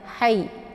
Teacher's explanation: Jadi sifatnya adalah hamas, ada desis anginnya ya. Hayy. Jadi anginnya itu agak samar-samar ya.